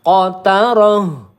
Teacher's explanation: roh tak marbutoh kita sukunkan, maka letak hurufnya ini makhrajnya di pangkal tenggorokan